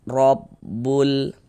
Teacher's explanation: Baris miring di atas ini namanya harakat fathah atau tanda baca fathah. Maka huruf ro dibaca tafkhim, dibaca tebal. Sehingganya pangkal lidah kita ini terangkat ke atas ketika kita mengucapkannya.